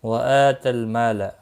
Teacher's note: حمزہ کے اوپر کھڑی زبر ہے، ایک الف کے برابر کھینچ کر پڑھیں گے